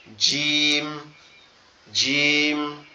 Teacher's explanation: জিমটা হচ্ছে আমাদের দুই দাঁতের পার্টি একসাথে চেপে লেগে থাকবে একটু শক্ত আওয়াজে পড়তে হবে